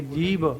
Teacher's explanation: ਜਿਵੇਂ ਅਸੀਂ ਬੋਲਦੇ ਨਾ ਜੀਭ, ਹੈ ਨਾ, ਜੀਭ ਲਿਖਣ ਲੱਗਿਆ ਵੀ ਜੱਜੇ ਬਿਹਾਰੀ ਭੱਬਾ ਜੀਭ, ਹੈ ਨਾ, ਜੀਭ ਥੋੜੇ ਬੋਲਾਂਗੇ ਆਪਾਂ, ਜੀਭ ਐ ਥੋੜੇ ਬੋਲਾਂਗੇ ਆਪਾਂ, ਬੋਲਾਂਗੇ ਜੀਭ। ਹੁਣ ਭੱਬੇ ਦੀ ਆਵਾਜ਼ ਇੱਥੇ ਬੱਬੇ ਵਰਗੀ ਬਣ ਜਾਂਦੀ ਹੈ, ਸਾਂਝੀ ਮਿਕਸ ਆਵਾਜ਼ ਹੋ ਜਾਂਦੀ ਹੈ। · ਬਟ ਜਦੋਂ ਭੱਬਾ ਕਿਸੇ ਅੱਖਰ ਦੇ ਨਾਲ ਲੱਗ ਕੇ ਸਾਊਂਡ ਦਿੰਦਾ, ਬੋਲਦਾ, ਜਿਵੇਂ ਸਭ ਹੈ ਨਾ, ਸਬਰ, ਸਭ ਤੇ ਹੋਰ ਅੱਖਰ ਬੋਲਦੇ ਹਾਂ ਅਸੀਂ, ਤਾਂ ਉਵੇਂ ਭੱਬੇ ਦੀ ਜਿਹੜੀ ਆਵਾਜ਼ ਹੈਗੀ ਆ ਉਹ ਬੱਬੇ ਵਾਂਗੂ, ਬੱਬੇ ਤੇ ਭੱਬੇ ਦੀ ਮਿਕਸ ਆਵਾਜ਼ ਹੋ ਜਾਂਦੀ ਹੈ। ਭੱਬੇ ਦੀ ਆਪਦੀ ਸਾਊਂਡ ਨਹੀਂ ਰਹਿੰਦੀ ਗੀ, ਬੱਬੇ ਵਾਂਗੂ ਹੋ ਜਾਂਦੀ ਹੈ। ਤੋ ਜੀ ਭੌ ਨਹੀਂ ਬੋਲਣਾ, ਜੀ ਭੌ।